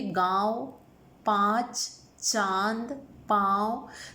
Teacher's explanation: हमारे मुख और नाक दोनों से वायु बाहर आ रही है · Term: अनुनासिक